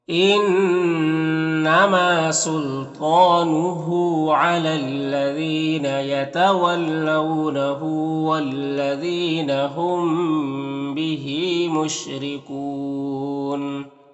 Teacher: زال کو باریک پڑھیں گے اور یہاں پر یا مدہ ہے، یہاں پر میم ساکن کے بعد با ہے تو اخفاء شفوی ہوگا